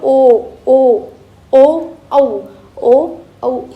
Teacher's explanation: औ हे जे आहेत यांचा मुखाश कोणत्या मुखातील भागाशी संपर्क येतो कंठ प्लस ओष याच्याशी संपर्क येतो म्हणून आपण याला काय म्हणतो कंठोष्ट